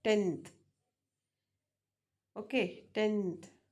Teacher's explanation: here n becomes dental nth